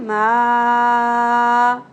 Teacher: तीन अलिफ के बराबर खींचना है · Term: मदे मुनफसिल